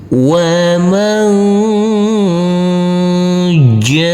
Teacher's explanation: Ini huruf hamzah tidak boleh ada aliran. Huruf jim kita baca dengan panjang 5 harokat.